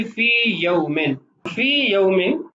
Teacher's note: مثال میں بھی آپ دیکھیے فی یومن، فی یومن پہلی یا کلمہ کے آخر میں اور دوسری یا دوسرے کلمہ کی ابتدا میں، تو ان دو یا کا آپس میں ادغام نہیں کیا جائے گا